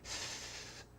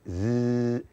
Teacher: you can pronounce the letter S without any voice behind it. S, but you can't say Z without voice. Z, you have to add voice.